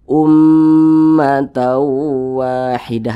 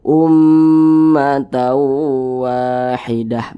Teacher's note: umnya yang kita panjangkan bukan Ma yang kita panjangkan tapi umnya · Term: ghunah musyaddadah